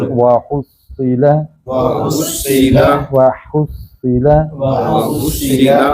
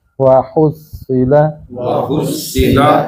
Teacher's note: ہا اس حلق سے ہوگا، سینے سے نہیں